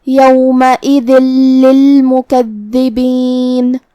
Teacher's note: کلمت للمکذبین میں یہاں دال کے تشدید کا دھیان رہے، دو حرف کے برابر ہم حرف الدال کو پڑھیں گے. آخر میں نون پہ رکیں گے تو اس پہ جزم سے رکیں گے، لہذا ہم نون کو ظاہر کریں گے.